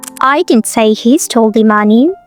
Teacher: Now if you put stress on I as I didn't say he stole the money it means someone else say that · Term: sentence stress